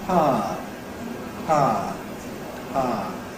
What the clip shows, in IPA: ˈpaə